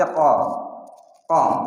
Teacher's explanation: Jangan ko tapi qo qo di pangkal lidahnya. Di bagian ujung di pangkal lidah bagian bagian atasnya qo.